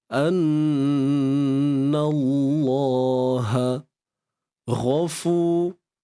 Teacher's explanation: Kalimah Allah ni tebal sebab sebelumnya baris atas, iaitu pada nun.